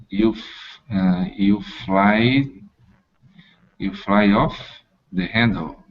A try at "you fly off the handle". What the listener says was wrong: Not off, but that letter J is the symbol for the sound y. Y.